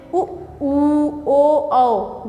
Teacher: जो वृत्तीय स्वर होते हैं ये होते हैं उ, ओ, औ, जिसमें होंठ का पूरा वृत्त बन जाए, वृत्तीय स्वर होते हैं वो। उ, ओ, औ बोल के देखिए, होंठ गोल बन जाता है